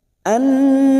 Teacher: nun yang bertasdid gunna musaddada kita dengungkan selama 3 harokat. Annallaha lam jalalah yang sebelumnya fathah kita baca tafkim.